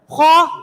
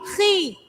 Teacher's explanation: Kho itu huruf tebal, tetapi ketika harokatnya kasrah maka ketebalannya berkurang. Khi tetap tebal, cuman berkurang, tidak seperti ketika kita mengucapkan kho.